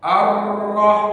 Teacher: huruf ro Pak takrir ini takrir ini getaran huruf ro bahwa huruf ro itu tidak boleh bergetar melebihi daripada sekali